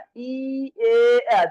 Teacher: জিহ্বাটা সামনে আছে, এই জন্য এটাকে বলা হয় সম্মুখ স্বর।